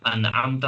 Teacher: नून की आवाज पूरी पूरी हमारे सामने आ रही है। अनमता यहां पर नून बिल्कुल वाज़ हो रहा है।